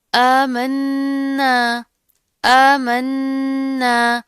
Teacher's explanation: کھڑا زبر آ رہا ہے، اس کو ایک الف کے برابر پڑھیں گے